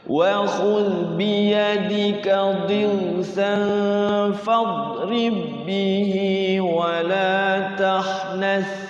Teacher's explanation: Jadi qalqalah, hukum qalqalahnya hilang. Kenapa? Di depan huruf ba ada ba lagi. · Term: Idgham mutamain